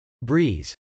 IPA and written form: brˈiz (breeze)